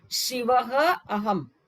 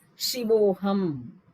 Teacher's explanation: Actually, change happens only one, just for you to know. The Purva A, the A before will turn into O. The Visarga will not be there. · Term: Sandhi